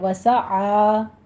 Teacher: آ وسط حلق سے ادا کرنا ہے، فتحہ قائمہ ہے، 2 کاؤنٹ کرنے ہیں، منہ کھول کے ادا کیجئے، عین کی آواز کو باہر نکالیے ، وسعا نہیں کہنا، آ حمزہ کی آواز ہے، یہ ہے